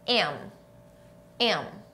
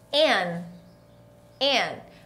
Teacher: Então, não é N, é M, bilabial, meus dois lábios se tocam